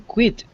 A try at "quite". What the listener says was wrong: Quite. Repeat this word, quite. If there were no e, if there was no e on the end, the word would be quit.